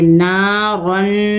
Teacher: ہے، دو حرکت کھینچ کے پڑھیں گے، را دو زبر رن، را کے اوپر دو زبر کی تنوین ہے، را کو موٹا کر کے پڑھیں گے ، دو حرکت ہونے کے ساتھ پڑھیں گے، نارن، میم الف